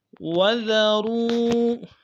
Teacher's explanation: ذال کو باریک ادا کریں گے، واو کو واو کے ساتھ ملانا ہے، واو مدہ ایک مقدار میں کھینچیں گے